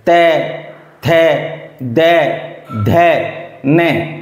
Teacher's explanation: ते, थे, दे, धे, ने, देखिए ये दांत अपनी जिब्बा से टच हो रहे हैं, जिब्बा दांतों से टच हो रही है, इसलिए उनका उच्चारण स्थान दंत माना जाता है